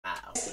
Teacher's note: les francophones canadiens ont tendance à parfois changer le « e » pour un « a » devant le « r ». What she's explaining here is something you do see quite a lot in Québécois, which is that E becomes A before an R.